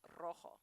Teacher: where it starts with the letter R it's always the rolled R